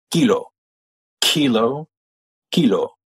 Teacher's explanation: the French ones don't use a big puff of air